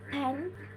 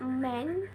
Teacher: bilabial ini tuh dihasilkan atau digunakan ketika kedua bibir atas dan bibir bawah itu menyatu